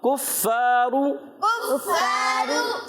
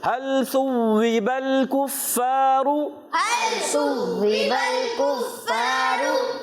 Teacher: काफ को बारीक रखना है, फा पर तशदीद आ गई, फाफ की अदायगी क्लियर रखेंगे, रा पर पेश आने की वजह से पुर अदा करेंगे।